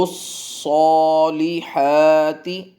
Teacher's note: صا اور حا دونوں کی لینتھ برابر